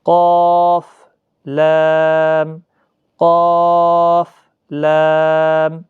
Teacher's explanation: 3 الف کے مقدار اور ساتھ میں مستعلیہ کا حرف قاف موٹا پڑھنا